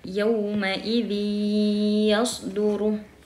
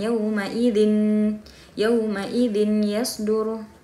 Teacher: tanwinnya itu sudah tidak terdengar nun, atau sudah tidak dibaca nun, karena suara tanwin ini langsung dimasukkan ke ya.